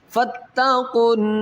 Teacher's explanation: یہاں پر نون مشدد ہے یہاں پر غنہ کریں گے